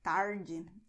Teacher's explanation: some people do roll the tongue backwards, and this is very regionally specific